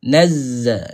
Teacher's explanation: Kena ada bunyi lebah tu, bunyi buzzing tu. Itu kita panggil sifat safir nama dia.